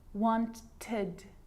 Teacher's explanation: But they're not always pronounced like it is in wanted. So you can hear the ed sound there. Id, wanted. It's its own syllable.